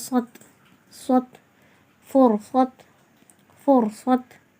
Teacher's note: ஹுர்ஃபே முஸ்தலியா இல்லையா, எல்லா நிலைகளிலுமே தடிமனாக வரும்.